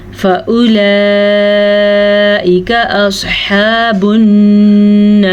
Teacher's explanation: مد کو ہم نے 5 سیکنڈ تک کھینچ کے پڑھا. یہ لمبی مد ہے اسی لیے.